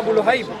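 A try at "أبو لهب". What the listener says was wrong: Abu Lahab, not Abu Luhayb. I'm correcting your pronunciation of Abu Lahab. You said Abu Lahib. But the word is. I corrected you last time. It's not Abu Lahib.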